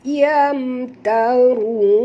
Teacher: Yam mim mati bertemu ta, tak boleh dengung, izhar syafawi